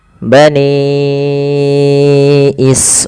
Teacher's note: Maka kita harus panjangkan dulu panjangnya 4 harakat dan tidak boleh kurang. · Bani awalnya 2 harakat nih, ra awalnya 2 harakat. Karena datang setelahnya hamzah maka dipanjangkan dia 4 atau 5 harakat. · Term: mad wajib muttasil